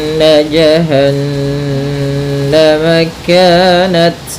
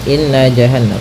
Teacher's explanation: pada bacaan in di sini ada hukum tajwid yaitu gunah yaitu cara membacanya adalah kita menahan suara nunnya ya terlebih dahulu sepanjang dua harakat lebih sedikit ya kemudian baru kita baca J tidak boleh atau jangan dilangsungkan